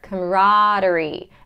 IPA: ˌkɑməˈrɑː.dər.i